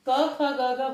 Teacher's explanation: तो जब हम क ख ग घ बोलते हैं तो वायु कंठ से निकलती है, तो ये कंठ हो गया।